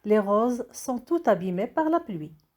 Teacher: On fait la liaison puisque abîmé commence par la voyelle A.